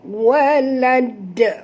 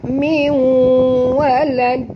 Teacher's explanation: Dan bila kita berhenti di sini, sahabat semua, kita kena lantunkan bunyi dal ni kuat sikit kerana dia berada di hujung kalimah. Maka hukumnya di sini qalqalah kubra walad.